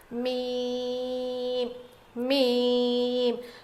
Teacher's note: دونوں ہونٹوں کے سوکھے حصے سے ادا ہوتا ہے